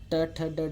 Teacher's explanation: मूर्धन्य जिनको उच्चारण करने पर जीभ थोड़ी सी आगे से मुड़ जाती है, वे मूर्धन्य कहलाते हैं।